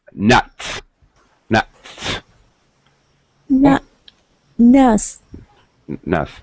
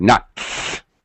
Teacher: so when I say the T and then an S I'm really going to hit the T hard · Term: aspiration